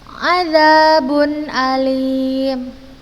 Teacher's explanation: ketika tanwin atau nun sukun bertemu dengan hamzah maka dibaca jelas